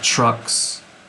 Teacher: the s causes the k to be pronounced in the same part of the mouth as the s